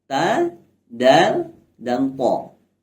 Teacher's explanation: ujung lidah yang bertemu dengan pangkal gigi seri atas bagian dalam